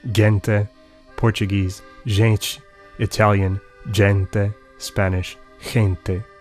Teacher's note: The same thing happens to G or G before E and I, which comes to sound like J or J, and later H in Spanish.